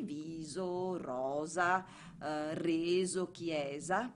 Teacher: la s invece diventa dolce quando si trova tra due vocali